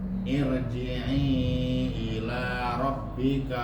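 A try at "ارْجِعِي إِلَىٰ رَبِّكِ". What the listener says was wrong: Irji'i ila rabbiki atau rabbika?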